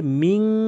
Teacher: এই 15টি হরফের মধ্যে থেকে যে কোনো একটি যদি এই নুন সাকিনের পরে আসে, যেমনটি এখানে শিন এসেছে, এর জন্য এই নুন সাকিনকে নাকের ভিতর নিয়ে পড়তে হবে, গুন্না করে পড়তে হবে